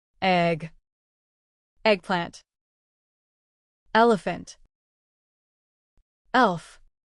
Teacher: place your hand on your throat as you say e and feel the vibration this happens because e is a voice sound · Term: short e sound